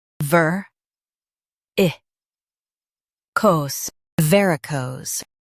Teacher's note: Stress ver and keep cose smooth.